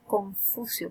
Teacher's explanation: este labio dental, es una asimilación del punto de articulación de un sonido cuando decimos Confucio,